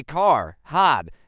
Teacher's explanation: a British speaker would say car had hot, the R is silent